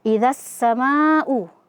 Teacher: Kemudian kita bertemu dengan alif maddiyah, ada huruf alif sebelumnya fathah, kemudian dalam satu kata setelahnya ada hamzah, maka di sini hukum tajwidnya adalah mad wajib muttasil, di mana kita membacanya 4 sampai 5 harokat.